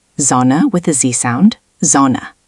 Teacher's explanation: At the start of a word, S often sounds like English Z.